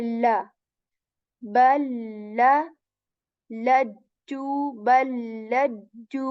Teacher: the lam letter, tip of the tongue touches the back of our upper teeth or hard palate.